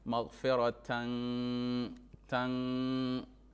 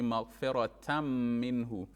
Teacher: nun with the sukun, nun sakina comes, and after that you have mim. It goes into it. Yes. It goes into it, and merges. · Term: idgham